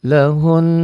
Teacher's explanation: Ditahan iya, dengung ke hidung ini karena gunah, bagian dari huruf gunah.